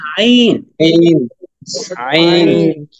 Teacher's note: এই আইনের মাখরাজ হচ্ছে গলার মধ্যখান থেকে, আইন এবং আ একই জায়গা থেকে